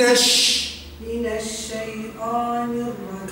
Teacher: هذه صفه التفشي لحرف ش